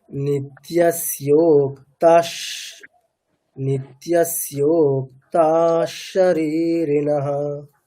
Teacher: আচ্ছা বিসর্গের পরে তালব্য স আছে, তাহলে আমাদের কি নিয়ম আছে, বিসর্গ তালব্যের মতো উচ্চারণ হবে, তাহলে স্যোক্তাস, স্যোক্তাস শরীরিণঃ।